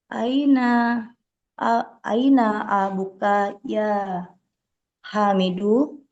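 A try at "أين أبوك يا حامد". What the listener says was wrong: tambahkan waw dikit abu ya abu ya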